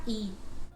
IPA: i